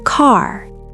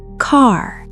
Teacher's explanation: Arabic R. Tongue tap, quick. American R. Tongue curl, glide, vibration. This glide is what makes the difference.